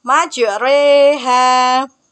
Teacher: Bacaan ini berarti membaca fathah yang condong kasroh. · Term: imalah